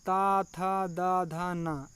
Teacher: इसका उच्चारण स्थान है दंत या दांत दोस्तों। ये दांत की सहायता से बोले जाते हैं। तो इसमें अघोष जो वर्ण हैं वो ता, था हैं, सघोष जो वर्ण हैं वो दा, धा, ना है दोस्तों।